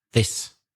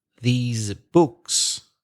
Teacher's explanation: is short and s sound with no vibration this whereas the plural these books is a long sound e and with vibrations